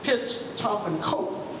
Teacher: these voiceless stops at the beginning of the word, they are aspirated.